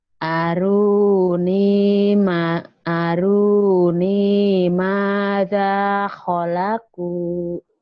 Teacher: Ma-nya panjang, da-nya panjang